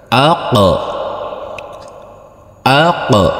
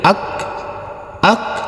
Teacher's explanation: Huruf qof sukun harus kita pantulkan juga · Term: Qalqalah